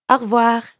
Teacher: when French speakers say au revoir quickly, it can sound like one word.